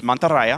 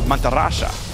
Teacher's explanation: in Deep South South America the Y becomes an sh sound